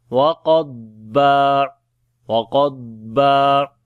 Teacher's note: Qaf and dad we read in heavy sound, and on the dad we make sifte istitwala, and also we long here when we stop.